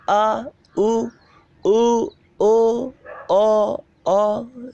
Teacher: ऐसा लगता है कि ध्वनि जो है वो अंदर से निकल के आ रही है, जीभ के पीछे से निकल कर आ, उ, ओ, है ना, ऐसा पता चलता है। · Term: पश्च स्वर